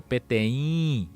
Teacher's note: esse in tem que sair nasalizado